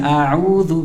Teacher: Biasa saja, nggak usah berlebihan. Kemudian jangan menebalkannya, karena ain sifatnya istifal, tipis